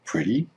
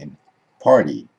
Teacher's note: the T sound will turn into an D sound in some cases for example where the T comes between two vowel or diphthong